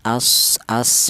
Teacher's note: ada suara bersiul apabila mati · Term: sifat saofir, sifat sofir